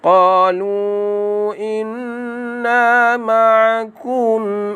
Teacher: Qalu inna dibaca dengan dengung 2 harakat sekadar sahaja pada nun, jangan baca panjang. Di sini hukumnya wajib al-gunnah, wajib dengung.